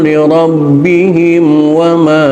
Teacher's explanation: mim mati ketemu waw, bukan ikhfa syafawi tapi idhar, idharkan, jelaskan mimnya